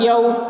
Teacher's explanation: معارب، معارب، یوم یرونہا، یا واو زبر یو، واو ساکن سے ہوا اس لیے واولین کو نرم آواز کے ساتھ جلد پڑھیں، معروف پڑھیں، مجہول آواز سے بچیں۔